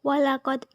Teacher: Pada ayat kelima, yaitu walaqad merupakan hukum bacaan qalqalah sugro karena huruf qalqalah dal berharokat sukun dan posisinya di tengah kalimat. Cara membacanya dipantulkan secara ringan